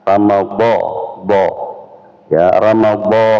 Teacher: makhraj D adalah tepi lisan atau lidah kita ketemu dengan gigi geraham atas. Ramad D ya Ramad.